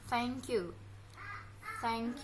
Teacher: dengan meletakkan lidah di antara gigi atas dan gigi bawah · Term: huruf TH